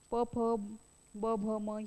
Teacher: खालच्या व वरच्या ओठांचा उपयोग करून जे वर्ण आपण उच्चारतो त्यालाच ओष्ठ असे म्हणतात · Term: ओष्ठवर्णे